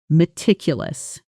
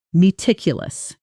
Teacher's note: Notice the stress falls on the second syllable.